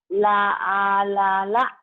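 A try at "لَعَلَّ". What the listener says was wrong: La'alala, nggak ada yang panjang.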